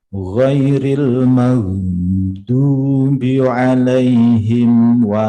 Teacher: Terus lidah mengenai sisi gigi geraham atas sebelah dalam. Walau ya, sifatnya dot itu istitolah, memanjangkan makhraj. Makanya dia kayak panjang. Ghairil maghdubi alaihim ya, manjang dulu dia karena sifatnya dia istitolah.